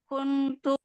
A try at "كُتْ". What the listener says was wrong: Jadi kita coba bacanya kutu. Kut, kut, kut. Enggak, bukan pakai N, pakai ta tasdid. Ka, ta.